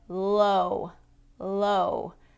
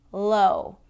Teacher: So words like low, low. That's a light L because the tongue tip is touching the roof of my mouth.